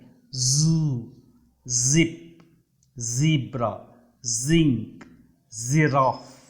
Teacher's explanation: ఇది జెడ్ శబ్దం. ఇది జీకి సిమిలర్గా ఉంటుంది, కానీ దీన్ని బీ అంటే తేనెటీగా బజ్జింగ్ సౌండ్ ఎలా చేస్తుందో అలా పలకాలి.